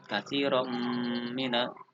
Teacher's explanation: terdapat hukum bacaan idgham bi ghunnah karena ada harokat tanwin yang bertemu huruf mim. Ghunnah artinya dengung.